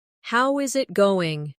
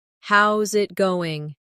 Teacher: how is it going? Becomes how's it going? The is disappears and the final G in going often softens. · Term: connected speech